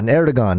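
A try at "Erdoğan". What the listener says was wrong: It's Erdogan is how it's pronounced in Turkish. Yeah, the G is a W.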